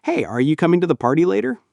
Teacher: In informal English, we tend to contract words like are you to your or are you coming to you comin' when speaking quickly.